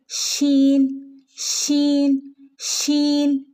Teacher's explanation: ഷീൻ എന്ന് പറയുമ്പം ആ ഷീനിൻ്റെ ശബ്ദം വരുന്നത് നാവിൻ്റെ നടുഭാഗം മേലണ്ണാക്കിൻ്റെ മുൻവശത്ത് ചേർന്ന് തട്ടുമ്പോഴാണ്